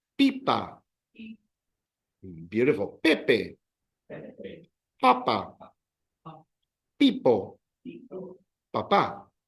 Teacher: they all end in um in a vowel so the emphasis is on the second last syllable